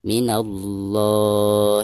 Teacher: dihukumi lam jalalah tafkhim jadi cara membacanya harus ditebalkan